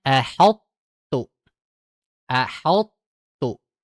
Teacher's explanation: membacakan ini dengan menebalkannya pada huruf tho terlebih dahulu kemudian masukkan kepada huruf ta dan dia tipis. Jadi bacanya tidak semuanya menjadi tebal. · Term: idgham mutajanisain